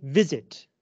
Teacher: the stress is on the first syllable.